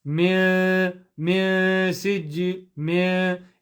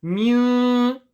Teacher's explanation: The sound of ikhfa does not come from the mouth, it comes from the nose.